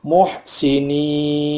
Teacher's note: Muhsinin, ada ya mati, sebelumnya ada kasrah, dibaca mad tabi'i, tetapi nunnya yang hidup mati karena waqaf, maka namanya mad arid lis-sukun